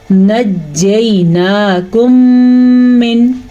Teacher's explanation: یاد رکھیں جب بھی میم ساکن کے بعد دوبارہ متحرک میم آ جائے یعنی زبر زیر پیش والا میم آ جائے، دونوں میموں کو آپس میں ملائیں گے تو ادغام ادا ہو جائے گا اور غنّے کے ساتھ اس کو ہم ملائیں گے آپس میں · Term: ادغام شفوی